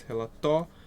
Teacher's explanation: O O sai com mais intensidade, então esse é um ditongo e crescente.